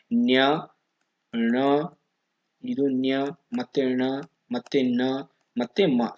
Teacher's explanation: ಮತ್ತೆ ಞ ಮತ್ತೆ ಮ ಸೋ ಇವು ಐದು ಅಕ್ಷರಗಳು ಪಂಚಮಾಕ್ಷರಗಳನ್ನ ಅನುನಾಸಿಕಗಳು ಅಂದ್ರೆ ಮೂಗಿನ ಸಹಾಯದಿಂದ ಉಚ್ಚರಿಸಲ್ಪಡುವ ಅಕ್ಷರಗಳನ್ನ ಇಲ್ಲಿ ಅನುನಾಸಿಕ ಅಂತ ಕರೀತಾರೆ